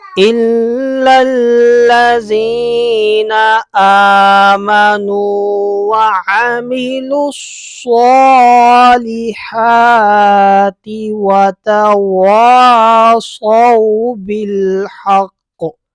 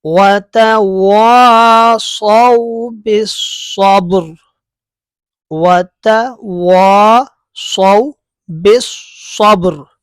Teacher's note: واو ساکن سے پہلے زبر ہے تو یہاں پر واو لین ہوگا، ٹھیک ہے؟ اور حروف لین کو لمبا نہیں کرتے